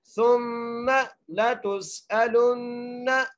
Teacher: اگلی آیت آخری آیت پڑھتے ہیں جی، سا کو میم سے ملاتے ہوئے غنہ کریں گے، ثم لتسألن، تا کو سین سے ملانا ہے، سیٹی کے ساتھ پڑھنا ہے سین کو، آگے حمزہ ہے، حمزہ کو بغیر کھینچے پڑھنا ہے، لام کو نون سے ملاتے ہوئے غنہ کرنا ہے